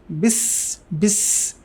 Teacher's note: সিনটা খুবই পাতলা হবে